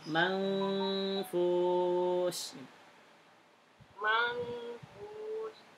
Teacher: Manfus, fusnya panjang. Manfus. Bukan ma, enggak panjang.